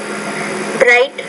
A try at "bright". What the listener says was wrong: Remember, when you have the BR like bright, it's not bright, brown, but it's just bright. So be careful of the consonant cluster involving the R. You don't want to pronounce it. You're pronouncing it like you do in your own language, and that's going to mark you as a non-native speaker.